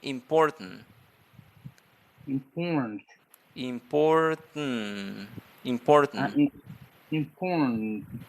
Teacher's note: try to eliminate the letter a in the pronunciation